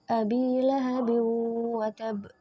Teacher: ada tanwin bertemu dengan huruf wawu, maka dibaca dengung atau melebur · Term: idgham bi ghunnah